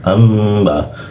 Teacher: Nun bertemu ba, amba, nah dia berubah jadi m dia. Lalu ditahan dia